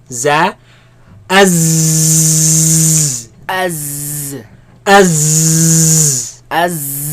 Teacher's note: There's a lot of commotion, a lot of air, a lot of movement of air between the tongue and the teeth